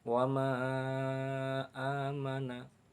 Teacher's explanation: dua kalimah atau beda kalimah ini dinamakan Mad Jaiz munfasil Adapun panjangnya menurut riwayat Imam hafz adalah 5 harakat atau 2 setengah Alif